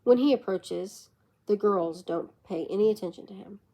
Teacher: When he approaches, the girls don't pay any attention to him. In A, the pitch of the voice will drop at the end of approaches and jump at the girls. In B, the pitch of the voice will continue dropping while saying the girls and jump up at don't.